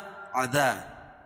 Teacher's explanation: عذاب، عذا، عین کو اپنے مخرج سے نکال کر پڑھیں گے، اور الف سے پہلے ذال کے اوپر زبر ہے تو الف مدہ ہوگا، اس کو ایک الف کے برابر کھینچ کے پڑھیں گے